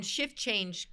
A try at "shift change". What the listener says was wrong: did you say shit change? I think you said shit